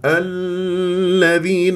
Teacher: تنبر لي الذال ليش تتك على الذال واللام ليش تمسكها الذين اللام بينيه ليست رخوه